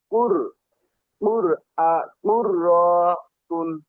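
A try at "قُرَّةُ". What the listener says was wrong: রতে টান হবে না কুর ধরে কুররতুন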